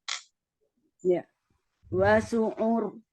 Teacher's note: tidak ditebalkan ya hanya rnya saja yang kemudian dia sifatnya mengalir